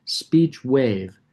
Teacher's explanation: the W drops F2 way down. And then going into WAVE, the F2 comes right back up again.